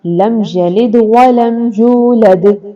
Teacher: میم ساکن کے بعد یا آ گیا، نہ میم ہے نہ با ہے، یہاں پر غنہ نہیں ہوگا۔ ولم یولد، میم ساکن کے بعد یا ہے۔ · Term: اظہار شفوی